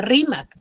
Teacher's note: Tiene su mayor fuerza de voz en la ri. Entonces, es una palabra grave.